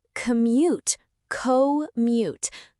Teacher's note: Some learners say commute, which is okay, but the stress on the first syllable sounds most natural in everyday speech